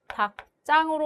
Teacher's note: 닭장으로 발음이 되죠. 이 경우는 리을 기역 뒤에 연결되는 지읒이 된 소리로 발음이 된 경우라고 볼 수 있겠습니다